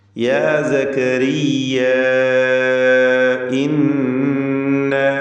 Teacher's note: ഇവിടെ യാ സക്കരിയ ഈ പദത്തിൻ്റെ അന്ത്യത്തിൽ വരുന്ന ദീർഘം മദ് മുൻഫസിൽ വാജിബ്, മദ് മുൻഫസിൽ ജായിസ് എന്ന ദീർഘമാണ്. മദ് മുൻഫസിൽ ജായിസ് അലിഫിനെ 4-5 ഹറക്കത്തിൻ്റെ അളവിൽ ദീർഘിപ്പിക്കൽ അനുവദനീയമാണ്.